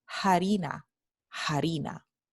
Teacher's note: este fenómeno se llama la aspiración de la h proveniente de la f latina ocurre sólo en las palabras que originalmente en latín está h